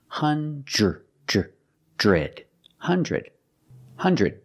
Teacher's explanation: the D at the end is a stop D stop the air don't release the D · The DR together makes the j j j sound like juice and jump. J j j. Put it together with the R sound.